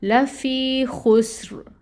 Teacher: را کے نیچے اگر زیر تنوین ہو، آگے وقف کر رہے ہوں، تو پھر ہم نے را کو ساکن کر دینا اور اس کو پر پڑھنا ہے